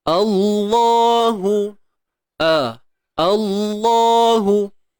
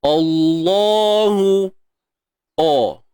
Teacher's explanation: Bukan tebal tu bunyi O. Starting dia mesti bunyi A lah pada hamzah wasal tu.